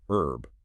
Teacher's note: differentiates British from American English where the H is dropped